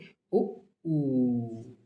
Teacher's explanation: वे स्वर जिनका उच्चारण करते समय ओष्ठ का आकार हो जाता है गोल। बोलोगे ओ ऊ, आकार हो जाएगा गोल। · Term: वृत्त मुखी, व्रतमुखी